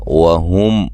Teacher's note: واو کو ہونٹوں کو گول کرتے ہوئے ادا کرنا ہے. میم ساکن کا اظہار ہے.